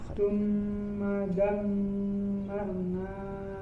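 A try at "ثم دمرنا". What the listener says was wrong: Tidak panjang, langsung ke lam qamariyah. Ra di kata dammar, ya, di situ ra sukun sebelumnya fathah termasuk yang dibaca tebal, ya, angkat suaranya ke atas.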